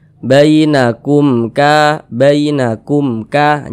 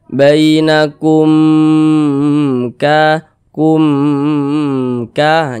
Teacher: karena dia izhar maka dibaca jelas tak berdengung baca pendek saja.